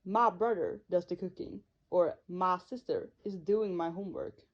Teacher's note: the word my, which transforms into ma in Texan English